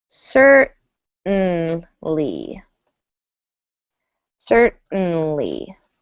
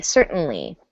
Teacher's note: So it's kind of a muted T or a disappearing T.